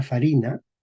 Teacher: la I se hace corta, perdemos el largo de las vocales